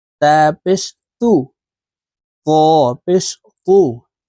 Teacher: হরফ পাতলা ভাবে উচ্চারণ করতে হবে আর এই ত হরফ মোটা ভাবে উচ্চারণ করতে হবে